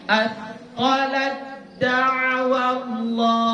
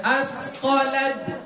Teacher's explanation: Jadi ta hilang. Kita langsung masuk ke huruf dal. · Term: Idgham mutajanis